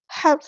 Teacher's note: ہا کو وسطی ہے لیکن مڈل تھروٹ سے ادا کرنا ہے